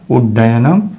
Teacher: इसी प्रकार से उद धन डयनम यहाँ तवर्ग का द है और इसका योग टवर्ग के ड से हो रहा है, तो द के स्थान पर त थ द ट ठ ड हो जाएगा। द के स्थान पर मूर्धन्य ड। इस प्रकार रूप सिद्ध होगा उड्डयनम।